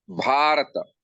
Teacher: just the first vowel of the word is converted into long